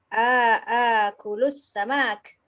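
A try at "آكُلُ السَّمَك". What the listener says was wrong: Akulus samak. Mimnya pendek.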